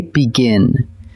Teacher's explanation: The stress lands on that last syllable, and a single vowel sits before a single consonant.